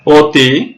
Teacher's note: সেই অ এর উচ্চারণ সংবৃত বা ওকারের মতো হয় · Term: সংবৃত উচ্চারণ